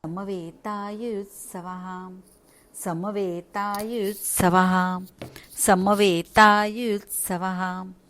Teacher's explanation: आता यू पहिला यू आहे आणि दुसरा यू आहे. दुसऱ्या यू वर तुम्हाला जोर द्यायचा आहे, कारण पुढे जोडाक्षर आहे.